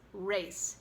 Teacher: in English it's race, and the ray sound is consistent all the way through